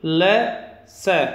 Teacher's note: और ल स, ये वर्ण दांतों के द्वारा उच्चारित होते हैं। इनके उच्चारण में जीभ दांतों को स्पर्श करती है, इसलिए ये दंत्य कहलाते हैं।